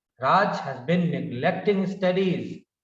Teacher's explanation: So Raj is stressed, has been is not stressed. We have to pronounce it in low tone.